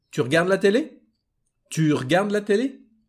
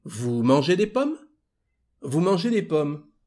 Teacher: And in spoken French is just your sentence, but you up your voice at the end and you get a question